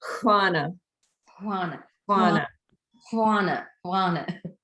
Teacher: there's an H and then a V in the same syllable. That's a very hard combination.